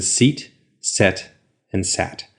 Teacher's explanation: your tongue starts up high e goes to the middle of the mouth and then goes down to AA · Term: tongue placement